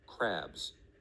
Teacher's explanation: pronounced like you would expect the letter s to sound however in crabs the ending should have sounded more like a z